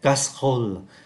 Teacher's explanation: Và chúng ta vẫn để ý là danh từ casserole 4 âm tiết, chúng ta chỉ còn đọc là thành 2, bởi vì âm tiết ơ ở ký tự ơ ở cuối không có đọc, và âm tiết có chứa được ký tự ơ nằm giữa cũng không có đọc.